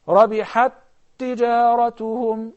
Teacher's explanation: we have two tas, but we're going to pronounce them as one